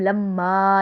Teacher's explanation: میم مشدد ہے اس لیے ہم ایک الف کی مقدار غنہ بھی کریں گے کیونکہ جب بھی نون اور میم مشدد ہوتے ہیں تو آٹومیٹکلی غنہ ہوتا ہے۔